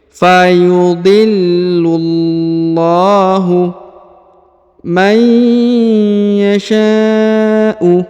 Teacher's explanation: huruf lam ditahan dan ditekan lalu dipanjangkan 2 harokat ya, karena di atasnya terdapat alif kecil